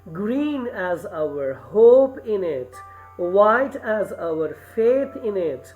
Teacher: The first syllable, green, is stressed. The next two are unstressed. · as our faith in it so you you have seen that the stress is only on green hope white and faith and the unstressed in them are the the next uh two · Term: dactyl